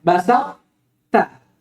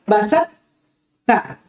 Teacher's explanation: Tidak boleh kita hilangkan to, makhrajan wa sifatan, tapi kita tetapkan sifatnya. Apa itu? Itbaq. Tetap kita tebalkan.